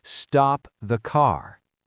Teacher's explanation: If a police officer tells you to stop your car, they use falling intonation.